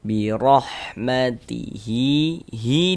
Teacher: Dibaca dengan panjang dua harakat. Karena ini huruf ha ini huruf ha damir yang diapit oleh dua huruf yang hidup. · hi dibaca panjang. Ini namanya adalah mad silah qasirah atau mad silah sugro. Dibaca dengan panjang 2 harokat. Karena ini huruf ha dhamir yang diapit oleh 2 huruf yang hidup, diapit oleh 2 huruf yang berharokat. · Nah, intinya itu memiliki baris di atas seperti ini huruf ra memiliki harokat fathah ini ya. Maka huruf ra dibaca tabkhim, dibaca tebal. Sehingga ketika kita mengucapkannya itu dengan menaikkan pangkal lidah kita.